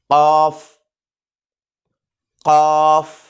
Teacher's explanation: जो हमने तालु हमारा नरम है, जो हमने यहाँ लिखा है कि तालु के नरम हिस्से से। तो यानी कि ख़ा और गईन से ज़रा ऊपर जो है ना वो हमने क़ाफ़ अदा करनी है · यूँ समझे कि हमारा जो कव्वा है ना वो हमारी ज़ुबान और तालु के दरमियान दब रहा होगा इस वक्त जब हम क़ाफ़ पढ़ रहे हैं। तो क़ाफ़।